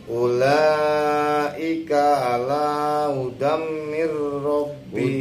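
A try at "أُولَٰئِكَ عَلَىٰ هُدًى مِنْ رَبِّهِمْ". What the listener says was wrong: Udam didegomkan dulu. Didegom.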